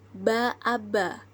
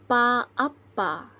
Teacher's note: fonem b&p terdapat letupan diantara bibir atas dan bibir bawah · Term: bilabial dan plosif, bilabial